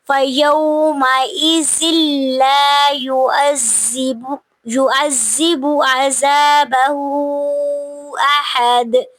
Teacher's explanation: تنوین کے بعد حروف ادغام میں سے لام آ رہا ہے، تو یہاں پہ ہم نے ادغام بغیر غنہ کے کرنا ہے کیونکہ لام جو ہے وہ بغیر غنہ کے حروف میں سے ہے.